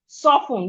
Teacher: The T in soften is silent, not soften.